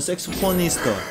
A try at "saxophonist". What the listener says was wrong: How do you properly pronounce it? Saxophonist. He was close. He said saxophonista. Saxophonista.